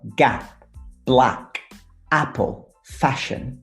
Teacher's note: That a sound is a little bit wider than our e sound.